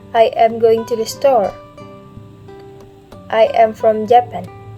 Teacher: In a statement, we use falling intonation or falling pattern.